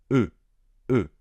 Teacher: Ce son E est fondamental en français. Vous devez le prononcer avec la bouche un petit peu arrondie